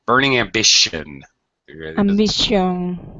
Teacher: The T-I-O-N, is an SH sound like ship.